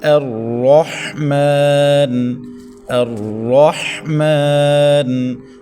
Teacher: را کو زبر کی وجہ سے پر پڑھیں، حا کو حلق کے درمیان سے ادا کریں. میم کے اوپر کھڑی زبر ہے، 1.5 الف تک کھینچیں. · تو یہاں پر حمزہ کو باریک، را کو موٹا پڑھیں